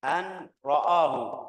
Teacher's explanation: Ra tebal. Hamzahnya harus tipis.